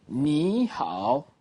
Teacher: when you hear 你, it's going up straight. That's the second tone.